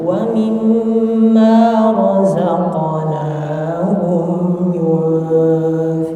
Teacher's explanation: wa mimma kurang, dua harakatnya kurang. Wa mim ditahan dulu.